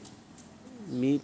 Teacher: میم کے نیچے جو زیر ہے کسرہ ہے، اس کو معروف پڑھیں، می پڑھیں، میں نہ پڑھیں، می پڑھیں۔